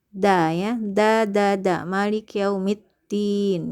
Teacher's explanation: Dan dal bertasdid di Maliki yaumiddin, hati-hati dia menggunakan pangkal gusi bagian atas ya. Jadi ujung lidahnya disentuhkan di pangkal gusi ya, bukan di tengah langit-langit